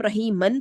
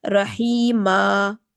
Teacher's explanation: رحیما، میم زبر الف، ما ایک الف کے برابر، 2 کاؤنٹس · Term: مد العوض